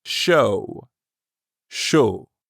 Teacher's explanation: pronounced like the english word show but you stop right before you start closing your lips for the w